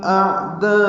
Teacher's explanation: اعداء میں حمزہ اقصی حلق سے ادا کریں گے، عین وسط حلق سے ادا کریں گے. حمزہ واضح ظاہر کر کے پڑھیں گے، اس کی صفت جہر کی ہے.